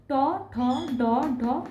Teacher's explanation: ট, ঠ, ড, ঢ মূর্ধন্য, এখানে এই 5টি মূর্ধাকে স্পর্শ করছে